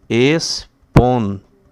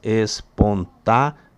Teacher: É a sequência de duas vogais, né, que estão juntas, pero pertencem a duas sílabas distintas, diferentes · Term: hiato